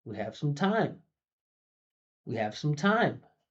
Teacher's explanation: I'm not putting emphasis on the T and time. I'm putting emphasis on the I and the M.